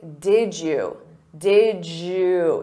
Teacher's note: Native speakers will combine did you and say did you. Did you. So you hear a j sound. Did you. Or we can reduce that to did ya or did ya.